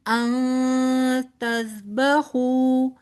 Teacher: نون ساکن کے بعد آگے تا آ رہا ہے لہٰذا یہاں پر اخفا ہوگا